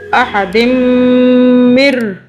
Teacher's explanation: میم پہ ہم 2 سے 3 سیکنڈ کا غنہ کریں گے